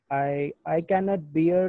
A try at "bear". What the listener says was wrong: I think that is not beard, B-E-A-R-D. That pronunciation is, I think, bear. I can't bear.